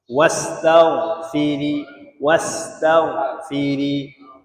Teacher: huruf gha ini salah satu huruf isti'la kan. Maka kena baca tinggi sikit.